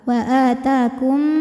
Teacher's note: Kemudian ada idgham mimi, sebab ada mim sukun yang menghadapi mim berharokat, maka mim pertama dileburkan ke mim kedua, wa atakum, sambil kita tahan bunyi M-nya ya, didengungkan